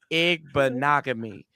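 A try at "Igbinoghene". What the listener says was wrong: you're saying an m at the end it's an N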